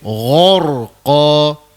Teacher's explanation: cukup mudah kita membunyikan ra tebal, disebabkan sebelum huruf ra mati kita bertemu dengan huruf ghain. Jadi ghain bersifat isti'la.